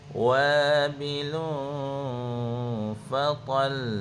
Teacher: Ha tu jadi lam biasa. Kalau lam yang bertasydid dia ada dua lam dia tekan lebih sikit